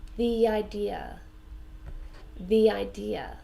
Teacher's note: so we connect the two words together with that yeah sound